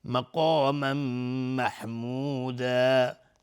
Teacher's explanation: قاف از حروف استعلاء غلیظ تلفظ میشه. الف هم تابع قاف غلیظ و تنوین بعدش میم ادغام با غنه.